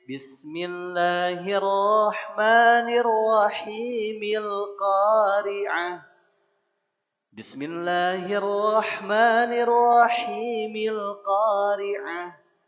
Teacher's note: Maka baca disambung dari bismillah, a-nya tidak dibaca lagi. Sehingga bacanya jadi Bismillahirrahmanirrahimil Qari'ah. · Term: hamzah wasal